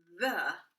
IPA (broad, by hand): ð